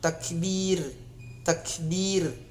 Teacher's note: Jika ro mati sebelum berbaris bawah, maka ro mati itu dibaca menipis, atau saya sebutkan tadi di awal, ro itu mulutnya ditarik, ro mati itu mulutnya ditarik karena dia tarqiq atau tipis.